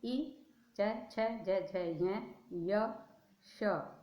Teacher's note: बोले तो कहाँ से बोले गए, तालु से